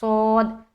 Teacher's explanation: صاد کو موٹا ادا کریں گے، سیٹی کی آواز بھی جھلکے گی، کیونکہ اس کے اندر صفت صفیر ہے